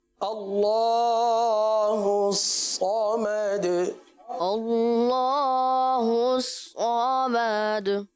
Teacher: اللہ عز و جل کے لام کو پر پڑھیں گے ، صاد ہے، صمد میں صاد پر پڑھیں